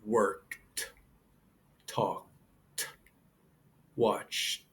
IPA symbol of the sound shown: t